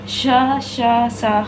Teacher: इनके उच्चारण में निश्वास वायु घर्षण के साथ मुख से बाहर निकलती है, यानी हमारे मुख से जो हवा होती है, वायु होती है, वो टकराते हुए बाहर निकलती है, इन्हें इसलिए ऊष्म व्यंजन कहते हैं।